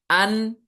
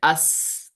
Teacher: اسی طرح نون ہے ہمارے پاس، حمزہ نون زبر ان، تو رک گئی نا آواز، ان فوراً رک جاتی ہے، اس میں جاری نہیں رہتی ہے۔ اگر آپ اس کو کمپیئر کریں گے سین کے ساتھ، سین میں ہم کرتے تھے اس، اس میں ہمس تھی نا، اس وہ جاری رہتی تھی، یہاں پہ جاری نہیں رہے گی۔ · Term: صفت جہر